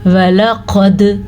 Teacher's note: قاف کو موٹا پڑھا جائے گا کیونکہ قاف حروف مستعلیہ میں سے ہے. دال پہ قلقلہ کیا جائے گا کیونکہ دال حروف قلقلہ میں سے ہے.